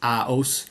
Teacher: an instance of two vowels coming together not forming a diphthong, for it's aus rather than aus, it's aos.